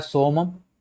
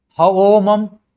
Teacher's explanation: स का अवेस्ता में ह हो जाता है